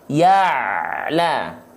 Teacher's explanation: antara ya dengan la dia nggak terputus · ain tidak boleh terputus karena dia punya sifat yang disebut dengan tawasud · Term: ain dalam kondisi sukun